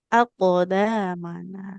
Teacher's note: kofnya itu harus memantul dengan sempurna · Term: qalqalah